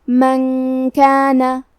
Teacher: کاف حروف الاخفاء میں سے ہے تو ہم یہ حکم کو غنہ کے ساتھ ادا کریں گے، من کانا۔ کلمت باللہ میں کیونکہ با کے نیچے زیر ہے تو یہاں بھی لفظ الجلالہ مطلب کلمت اللہ کے لام کا حکم ہے ترقیق، مطلب ہم حرف اللام کو پتلی آواز میں پڑھیں گے، باللہ۔